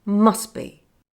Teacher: Another common feature of fast speech is when the t is dropped at the end of a word in the middle of a sentence. It happened when I said the words must be.